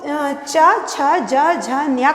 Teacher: तो च छ ज झ न्य का उच्चारण स्थान तालु है। जो जीभ है जाकर के तालु को स्पर्श करती है, इसीलिए इसे तालव्य वर्ण कहा जाता है।